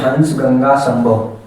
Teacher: जैसे हंस गंगा संभव ये पंचवर्ण में आता है जो केवल नाक से ध्वनि निकलती है इनके अंदर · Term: अनुस्वार